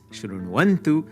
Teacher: the semi-vowel sandhi is going to be happening where the vowel u in shrunu becomes a semi-vowel wa